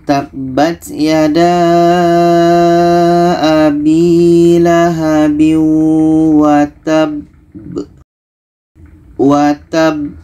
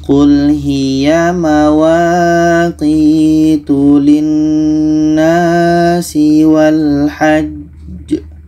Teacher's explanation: Cara bacanya kita berhenti 2 detik, setelah itu kita pantulkan. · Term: qalqalah akbar